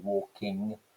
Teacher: the velar nasal phoneme that you get on the end of progressive aspect words like walking